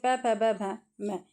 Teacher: ओष्ठ से दोनों होठों से